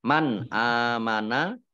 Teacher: nun sukun bertemu dengan huruf alif ini bacaan izhar dibaca jelas